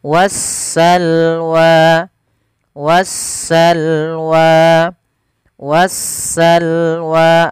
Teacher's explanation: suara Alif lamnya diidgamkan ke huruf Sin sehingga sinnya berharakat tasdid maka wasalwa wasalwa wasalwa seperti itu kemudian padafalwa ada Mad thii · Sedangkan di alif lam syamsiyah yaitu suara sinnya, suara alif lamnya diidghamkan ke huruf sin sehingga sinnya berharakat tasydid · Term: alif lam syamsiah